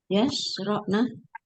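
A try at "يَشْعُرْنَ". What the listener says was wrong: Yash'urna. Kebalik. Huruf terakhirnya ro, bukan ain. Yash'urna. Jadi huruf terakhirnya disukunkan.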